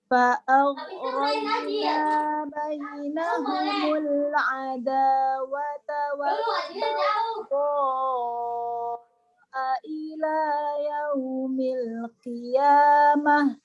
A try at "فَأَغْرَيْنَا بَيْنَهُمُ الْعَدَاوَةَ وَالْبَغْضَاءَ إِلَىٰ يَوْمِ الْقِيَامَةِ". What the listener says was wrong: Haknya kurang mengalir sudah. Ya, ila yaumil qiyamah. Jadi ada rokhawah, ada hamas yang agak kuat.